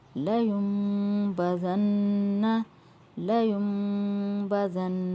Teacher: یہاں پہ ہم نے ہجے کرتے ہوئے نون ساکن کا نام نہیں لیا بلکہ میم کا نام لیا، کیونکہ نون ساکن کے اوپر میم ہے تو نون کو ہم میم میں بدل کر پڑھیں گے، نون ساکن کو ہم میم میں بدل کر پڑھیں گے، کیونکہ اس کے بعد والا حروف جو وہ با ہے تو یہاں پہ قاعدہ ہو رہا ہے اخفا مال غنہ کا۔